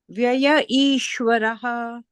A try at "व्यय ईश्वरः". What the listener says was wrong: Very nice. Excellent.